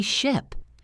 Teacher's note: Your mouth is more relaxed. The sound is shorter. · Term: i sound